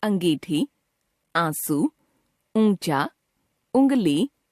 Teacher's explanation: अनुनासिक वे स्वर हैं जिनको बोलते समय हवा मुंह और नाक दोनों से बाहर निकलती है।